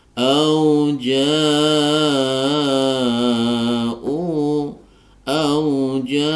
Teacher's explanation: Mad thai'i bertemu dengan Hamzah dalam satu kata maka dibaca mad wajib muttasil dipanjangkan empat harakat · Ya, di sini ada bacaan panjang 2 harokat mad tabi'i bertemu dengan hamzah dalam satu kata, maka dibaca mad wajib muttasil dipanjangkan 4 harokat. Di sini ada hamzah berharokat dhammah diikuti waw sukun, maka di sini disebut mad badal, ya.